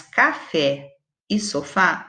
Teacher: As duas têm a última sílaba tônica, portanto, elas são oxítonas.